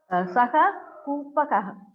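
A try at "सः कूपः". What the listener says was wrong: Why Kupaka? Why are you reading Ka? From where Ka comes? Kupa is a Pratipadikam. Kupaha, Kupau, Kupaha. Not Kupakau, right?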